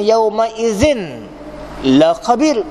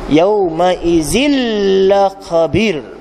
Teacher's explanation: Dia tak bunyi dah tanwin, tak bunyi nun mati, dia bunyi sabdu.